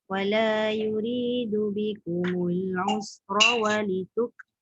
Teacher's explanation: Ra tu pendek dan tebal.